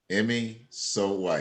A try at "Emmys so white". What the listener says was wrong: Not Emmy Snow White, but Emmy's so white.